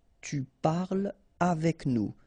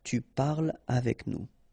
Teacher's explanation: so no liaison here between parle and avec